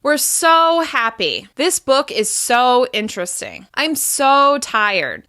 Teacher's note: We stress the word so by making it longer, louder, and higher in pitch, and really holding that vowel sound.